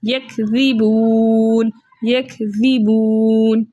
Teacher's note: اب واو مدہ کے بعد جو ہے واو ساکن سے پہلے پیش ہے، اس لیے یہ واو مدہ کہلایا ہے، واو مدہ کو دو حرکت کی مقدار کھینچ کر پڑھتے، لیکن آگے نون کا سکون عارضی وقف کی صورت میں آ رہا ہے، اس لیے ہم اس کو یہاں پر مد بن رہی ہے مد عارض وقفی، جس کی مقدار 2 4 6 حرکت ہے، لیکن 6 حرکت کی مقدار کھینچ کر پڑھنا زیادہ بہتر ہے